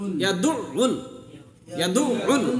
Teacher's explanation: দেখেন আইনের পরে এখানে ইয়াদু, ইয়াদু উল যদি বলেন তাহলে কিন্তু একটা আইন উচ্চারণ হবে। আইনের পরে কিন্তু তাসদিদ আছে, তার মানে কি এই আইনটা দুইবার উচ্চারণ করতে হবে।